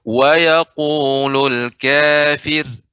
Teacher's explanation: Kemudian ya kafir tadi kafir dibaca dengan tipis ketika berhenti ya waqaf pada kata kafir, wa yaqulul kafir, tipis ya. Kadang ra yang disukunkan karena waqaf, sebelumnya kasrah dibaca dengan tipis